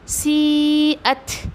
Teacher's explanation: आपको वहाँ पे हम्स करना है, ता पर हम्स करना है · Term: ता का हम्स